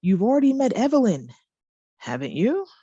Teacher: my voice goes down at the end of the question tag when the speaker is just inviting the listener to agree. So I don't want an answer.